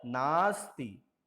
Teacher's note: दोनों अ और अ मिलकर के एक दीर्घ स्वर में परिवर्तित हो जाएंगे आ। तो न आस्ति बराबर नास्ति।